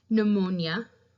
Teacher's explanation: We drop the P and just pronounce the N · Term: silent letters